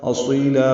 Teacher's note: حمزہ اقصی حلق سے بالجہر ادا کریں گے